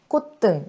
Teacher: 콧등 자연스럽게 발음을 해보면 뒤에 있는 등 할 때 그 예사소리 디귿이 콧등 이렇게 쌍디귿으로 된 소리로 발음되죠.